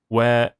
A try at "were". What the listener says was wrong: The slightly were. I think you said like where.